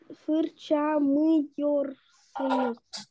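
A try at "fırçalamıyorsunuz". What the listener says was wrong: Молодец, только один слог пропустила. Фырчала мыёрсунус. Фырчаламак. мыёрсунус.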